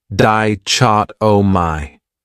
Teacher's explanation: This word has 4 syllables, and the stress is on that second syllable, dichotomy. That third syllable has that schwa